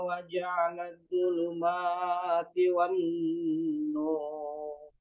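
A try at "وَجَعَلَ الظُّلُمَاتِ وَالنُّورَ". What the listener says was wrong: Wa ja'ala zulumat, mimnya 2 harokat.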